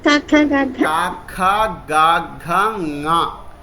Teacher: క పలికిన చోటే అనునాసికంగా పలికితే అది వచ్చేస్తుంది క ఎక్కడ పలుకుతుంది మన కొండ నాలిక దగ్గర కంఠంలో నాలిక తగులుతూ ఉంటుంది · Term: పంచమాక్షరం